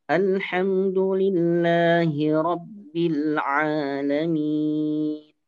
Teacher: kita membaca mad 'arid li sukun dengan 4 harokat